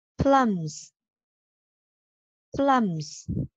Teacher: Rồi từ này các bạn lưu ý cả âm đầu và âm cuối của mình nha. Âm đầu ngậm hai môi lại, bật hơi ra nhẹ nhàng.